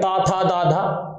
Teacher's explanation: जैसे आप पा फा बा भा मा बोलेंगे तो आप देखेंगे आपके होठ लगातार भिड़ रहे होंगे, ऐसे आप अगर तावर्ग बोलेंगे ता था दा धा तो आपकी जो जीभ है वो दांतों पर लग रही होगी लगातार